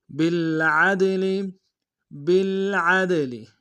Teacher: بالعدل، بالعدل، عین کو دال کے سامنے لیں گے، دال حروف قلقلہ میں سے قلقلہ کریں گے